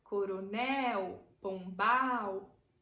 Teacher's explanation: a última sílaba é mais forte · Veja que são palavras oxítonas. Coronel, pombal. A última sílaba é a mais forte.